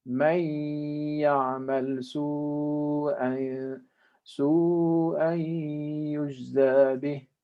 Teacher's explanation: a link or a merging between the noon and then the ya, the next ya, with ghunna at this point.